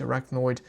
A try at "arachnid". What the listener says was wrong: Arachnid. You said arachnoid.